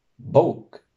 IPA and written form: 'bouːk (BÓK)